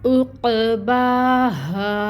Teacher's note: با کے اوپر کھڑی مد ہے، 2 حرکت لمبا کھینچیں گے، اور الف ساکن سے پہلے ہا کے اوپر زبر کی حرکت الف مد کا رول ہو رہا ہے، تو ہا کو 2 کاؤنٹس لمبا کھینچیں گے، اور ہا کو ہم نکالیں گے اقصی الحلق سے